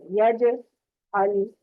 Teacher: جیم پہ اس کو مخرج پہ رکھ کے چھوڑ دیں گے، چھوڑ دینے سے قلقلہ ہوگا